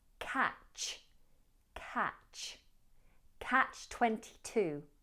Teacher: Now, in the word catch, ignore the T, but make sure that you don't soften the CH. It's pronounced ch, not sh. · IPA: /kætʃ/